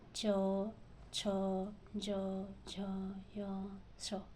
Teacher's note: तालु में आपका आएगा चवर्ग। तालव्य ध्वनियों का उच्चारण जीवा के अग्रभाग के द्वारा कठोर तालु को स्पर्श करने से होता है।